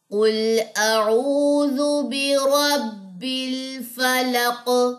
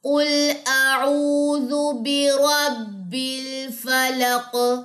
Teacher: قاف پہ قلقلہ ہوگا جب آپ اس پہ وقف کریں گے، قاف جزم والی پہ۔